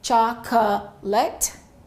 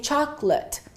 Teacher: don't say chocolate which I've heard some of my students say we reduce it to two syllables and we say chocolate the late becomes L and the O completely disappears